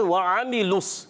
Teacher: عین کلیئر حلق کے درمیان والے حصے سے